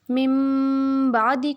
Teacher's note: نون ساکن یا تنوین کے بعد حرف با آ جائے تو اقلاب ہوگا، یعنی نون ساکن اور تنوین کو میم سے بدل کر اخفا کریں گے، یعنی غنہ کریں گے